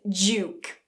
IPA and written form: dʒu: (duke)